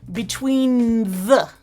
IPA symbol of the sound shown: nð